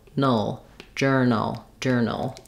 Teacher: there's a little schwa before the dark L, but you want to move quickly from your N to the ul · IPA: /ˈdʒɜrnəl/